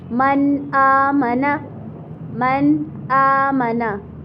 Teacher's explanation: यानी आवाज़ को ज़ाहिर करके पढ़ेंगे नून साकिन या तनवीन की आवाज़ को, और इसमें हमने गुन्ना बिल्कुल भी नहीं करना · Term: इज़हार